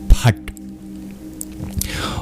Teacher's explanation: It's a retroflex sound, meaning you curl your tongue back in order to pronounce it. So actually the bottom of your tongue hits the hard palate.